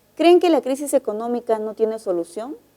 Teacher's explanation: esa es una pregunta y el tono final es ascendente